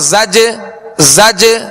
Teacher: زج جیم کی ادائیگی میں مخرج میں جنبش ہو رہی ہے، جو آواز لوٹتی ہوئی آ رہی ہے اسے قلقلہ کہتے ہیں